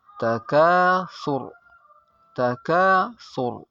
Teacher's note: Dan sebelumnya ada harakat yang di dhammah atau sa yang di dhammah, maka ra-nya dibaca mati dan dibaca tebal